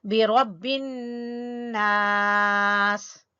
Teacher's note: اعوذ برب الناس، برب، با کو باریک پڑھیں گے لیکن را کو پر پڑھیں گے، را، برب الناس، اور نون مشدد کا غنہ ادا کریں گے اور اس کے ساتھ الف مدہ ادا کریں گے